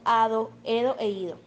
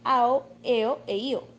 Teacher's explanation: La elisión de las dentales en los sufijos ado, edo e ido, y sus correspondientes formas femeninas convirtiéndose en ao, eo e io.